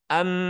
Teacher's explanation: mendengung di rongga hidung dua ketukan am baru kemudian masuk ke huruf berikutnya di ketukan ketiga Ma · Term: gunah